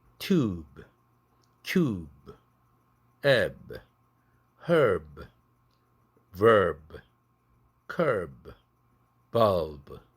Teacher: 단어의 끝음절의 마지막 자음으로 부드가 왔을 때 아주 약하게 파열됩니다. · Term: 연음